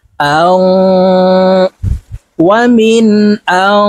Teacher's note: এই নুনকে নাকের ভিতরে লুকাইয়া গুন্নার সহিত পড়ব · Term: গুন্নাহ